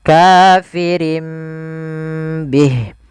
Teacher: Iqlab itu mengganti suara nun menjadi suara mim. Maka di sini ditandai dengan huruf mim kecil.